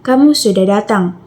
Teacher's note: Nada datar itu yang menunjukkan pernyataan.